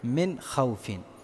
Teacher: اظہار کا مطلب یہ ہے کہ جو نون ہے اس کو ظاہر کیا جاتا ہے اور اس میں غنہ نہیں کیا جاتا